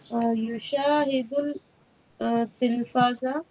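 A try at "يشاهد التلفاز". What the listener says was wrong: Ta Shamsi hai Yushahidut Tilfaza Alif Lam silent ho jayega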